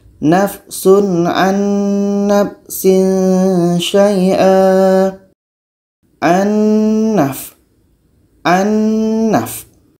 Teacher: Kita harus bacanya secara idgham kamil, harus masuk secara sempurna. Bunyi nun masuk kepada bunyi nun yang kedua.